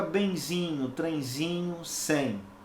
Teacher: a letra E, eu tenho que compreendê-la como um som nasal, como se ela tivesse um tio, né? O tio é o sinal de nasalização. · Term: ditongo nasal